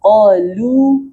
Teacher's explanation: Harusnya qalu tipis. Q-nya tebal, lamnya tipis.